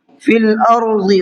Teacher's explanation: ضاد کو منہ بھر کے پڑھنا ہے